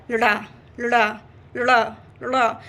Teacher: नहीं आनी चाहिए उसमें केवल ऐसे उसको प्रोनाउंस करना है कि खाली आधा ल आप बोलो और ड़ जो होगा वो पूरा रहेगा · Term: विशिष्ट व्यंजन